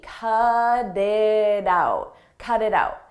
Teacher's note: You'll notice we have T's in between vowels. In American English, when a T comes between vowels, we change that to a d, a very soft D.